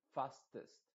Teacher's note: a pesar de que es una e tú ves escrita una e esa e se está pronunciando con una I modificada